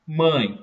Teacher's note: A, na mãe, núcleo da sílaba, o E com som de I, semivogal.